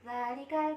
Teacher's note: hukum tajwid yaitu matobi'i yang terdapat pada kalimat dzalika. Cara membacanya yaitu dibaca panjang 2 harokat.